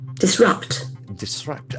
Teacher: Accent falls on the second syllable.